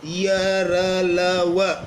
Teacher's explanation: ऐसा लगता है जैसे वायु थोड़ा रुक कर के बाहर निकलती है और इनको बोलने में हमें ज्यादा शक्ति लगाने की ज्यादा दम ताकत लगाने की आवश्यकता नहीं होती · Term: अंतस्थ व्यंजन